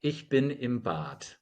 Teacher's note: The D automatically becomes a T because it's at the end of the syllable / the end of the word.